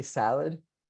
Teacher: when you say salad your mouth really open only opens once the second syllable your mouth actually closes that is a vowel reduction